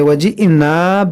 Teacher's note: हमज़ा साकिना है, इसको झटका देकर पढ़ेंगे